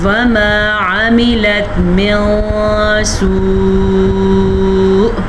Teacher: حمزہ کی آواز بھی آنی چاہیے اور مد بھی آپ کو 5 سیکنڈ تک لمبی کرنی ہے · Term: بڑی مد